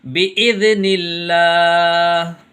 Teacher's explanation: یہاں یہ اللہ کا لام باریک ہوگا کیونکہ یہاں اللہ کے لام سے پہلے حرف کے نیچے زیر ہے